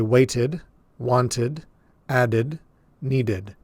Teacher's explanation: In order to clearly hear this, we have to add an extra vowel sound in between the final T or D in the word and the D that we're adding to make it past tense. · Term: extra syllable